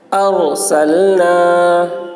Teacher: رائے ساکنہ سے پہلے زبر ہے اس لیے را کو پر پڑھیں گے